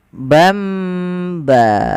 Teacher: diganti suara tanwin atau suara nunnya menjadi bamba. Ada tambahan mimnya. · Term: iklab